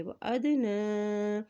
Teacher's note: نون کے اوپر کھڑی زبر بھی ہے اور مد بھی ہے اس لیے اس کو لمبا ادا کریں گے